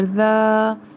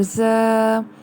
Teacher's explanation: یہاں پر یہ چیز یاد رکھیے کہ زال اور زا میں ڈفرنس ہونا چاہیے۔ زال کو ہم نرمی سے ادا کرتے ہیں، اور زا میں ہم سیٹی کی آواز اس میں موجود ہوتی ہے